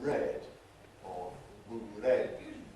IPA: bəˈred